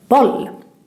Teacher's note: the other O, which is in boll, sounds a bit different. It sounds shorter because we have two consonants, two L coming after.